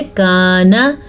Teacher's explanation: काफ नरमी से पढ़ेंगे। अक्सर लोग इसको पढ़ लेते हैं काना, ये गलत है